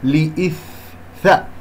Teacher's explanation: مخرج الثاء ضعيف ويحتاج إلى جريان للهواء وجريان للصوت حتى أنا أسمع صوت الثاء